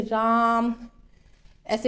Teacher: राम बोलने में खींच के बोला जाता है तो उसे प्लुत स्वर कहते हैं। इसमें अधिक समय लग रहा है ना, तो जिन वर्णों को नाटक या संबोधन के समय प्रयुक्त किया जाता है जैसे कि राम या किसी को संबोधित करना, तो वो प्लुत स्वर है।